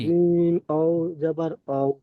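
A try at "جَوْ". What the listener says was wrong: ওয়াও নয়, জিম জাবার যা পড়েছিলাম, জিমের সাথে ওয়াও যুক্ত করব, জিম ওয়াও জাবার যাও।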